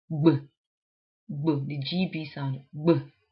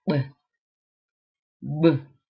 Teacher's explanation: you can feel your vocal cords vibrating there. So it's a voice sound as compared to b, b.